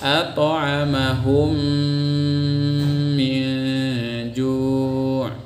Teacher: Cara membacanya, masukkan mim yang pertama secara total kepada mim yang kedua. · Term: idgham mutamatsilain